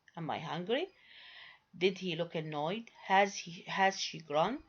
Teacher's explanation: these are positive yes no questions. They are said with a falling tone and not rising. · both operator and subject usually receive emphatic stress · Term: exclamatory question